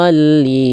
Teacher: tapi do-nya harus panjang, 6 harokat, kurang panjang. Mad lazim.